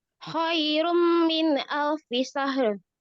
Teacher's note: rumnya ditahan ya, karena itu adalah idgham bi gunnah